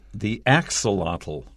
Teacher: the axolotl first syllable has the stress